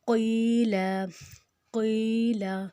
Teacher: قاف جو ہے وہ موٹا، یا کے اوپر جزم، یا کے پچھلی زیر کے ساتھ 2 حرکت لمبا ہو جائے گا